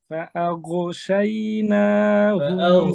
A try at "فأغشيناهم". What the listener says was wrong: গয়নের আওয়াজ হচ্ছে না, গয়নের আওয়াজ মাখরাজ থেকে ছুটে যাচ্ছে। ফাআগশা। আরো নিচে নামেন, আরো নিচে নামেন, জিহ্বার গোড়া ভিতরে ঢুকান, জিহ্বার গলার ভিতরে। গ, গ বলেন। সামনে চলে আসতেছে, আরো ভিতরে। গ, গ।